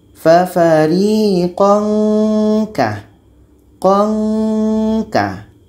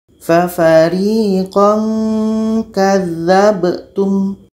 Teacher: Dibaca samar dan dengung. Dengungnya 2 harakat.